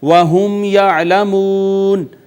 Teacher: میم ساکن پہ اظہار شفوی، میم واو کا ماقبل مدموم، واو مدہ